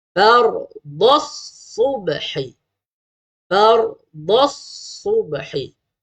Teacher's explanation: Ada bunyi huruf sad, bukan bunyi huruf sin.